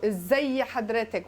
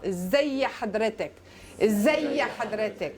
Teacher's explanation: You have 3 consonants in a row in Egyptian Arabic. What happens in the pronunciation? You get a little helping vowel between the second and the third.